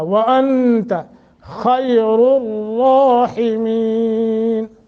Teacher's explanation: اخفا کریں گے، اخفا، واو کو موٹا، وانت خیر الراحمین، خا کو موٹا، را کو موٹا، دونوں را، پہلا دوسرا، اور حیم مد عارض ہے، ہا، حیم، خیر الراحمین غلط ہوگا، پنجابی ہوگا، بلکہ خیر الراحمین، حیمین، ہا، ٹھیک ہے جی۔